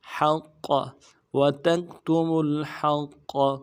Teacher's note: وتکتموا الحق، حا کو گہرائی سے ادا کرنا ہے، قوف کے ساتھ ملانا ہے، قوف کو موٹا کریں گے، قاف کے اوپر تشدید ہے، زور دیں گے